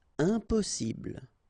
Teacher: You don't pronounce the m